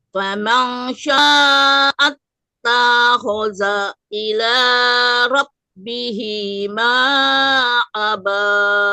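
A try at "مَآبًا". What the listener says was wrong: Ma'aba. Maknya itu, maknya pendek.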